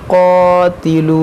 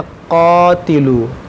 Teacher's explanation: ये क़ाफ़ हुरूफ़ मुश्तालिया है और अलिफ़ से पहले यहाँ पर ज़बर भी है, तो इसको हम मोटा पढ़ेंगे।